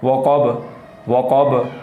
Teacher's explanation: والا کاف ہے، وقب دو نقطوں والے کاف کو پڑھتے ہوئے زبان کی جڑ اور زبان کے درمیان والے حصے کو تالو کی طرف بلند کرنا ہے